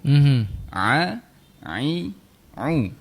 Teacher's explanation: Untuk huruf Ain di tengah rongga kerongkong.